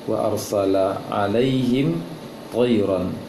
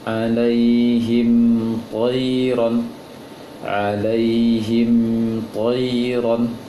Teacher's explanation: Alaihim tidak boleh dengung, mim sukun bertemu dengan ta.